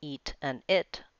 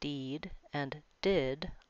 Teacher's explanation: the vowels before a T, as in eat and it, are short, but before a D, as in deed and did, they are long